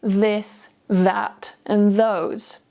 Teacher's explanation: This is the voiced th sound in words like this, that, and those. To make this sound, your tongue goes between your teeth and your tongue lightly touches your top teeth. Your voice vibrates here in your throat. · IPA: /ð/